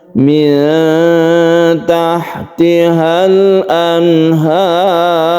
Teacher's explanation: Kemudian di sini anhar ini kita baca panjang karena mad alid disukun. Kemudian roknya ini karena dia itu dimatikan dan sebelumnya ada fathah, maka dibaca tebal atau tafkhim